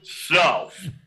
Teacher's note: There's an F sound with the TH in the end